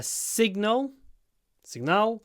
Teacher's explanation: the stress is on the first syllable signal so you need to make the S long uh signal